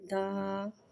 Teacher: الف مدہ ہو رہا ہے، لہذا حرف مدہ کو ایک الف یعنی 2 حرکات کے برابر کھینچ کے پڑھیں گے. دال الف زبر دا.